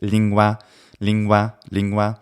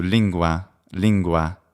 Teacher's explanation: Once we get to that N, we round the lips and then we form the G. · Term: labiovelar